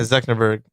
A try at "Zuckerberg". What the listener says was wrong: Why are you saying it like that? Zuckerberg. There's no N.